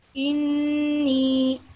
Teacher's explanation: Ya will be given, Yamada is 2 seconds, and Noon Mushadda with an extra sound, 2 seconds.